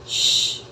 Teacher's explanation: a small opening near that teeth the teeth sh and the air passing through we can hear the air turbulence of course all of those have the same manner of articulation